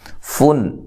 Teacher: نون تنوین کا اظہار ہے، غنہ نہیں کیا جائے گا